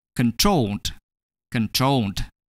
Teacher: In this situation, the last syllable, troll, is stressed.